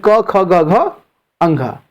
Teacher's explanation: इसका उच्चारण स्थान कंठ से होता है, इसलिए इसे कंठ वर्ण कहते हैं